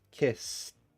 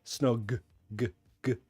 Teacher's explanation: kiss, the end sound is unvoiced. Kiss. This is a voiced sound. Snog, g, g. There's a vibration in the throat.